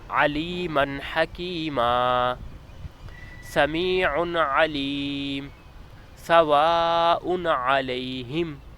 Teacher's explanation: یہاں حروف پر تنوین 2 زبر 2 زیر 2 پیش کے بعد حروف حلقی میں سے آ رہا ہے تو یہاں گنہ نہیں ہوگا بلکہ اظہار ہوگا، یعنی تنوین والے حرف کو بغیر گنہ کے پڑھیں گے۔